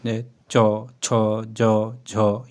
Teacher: च वर्ग के व्यंजन उच्चारण में स्वास में कुछ घर्षण के साथ बाहर निकलती हैं। इसलिए इन्हें स्पर्श संघर्षी व्यंजन कहते हैं।